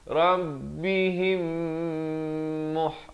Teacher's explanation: Mim mati bertemu mim. Dengung dua harakat.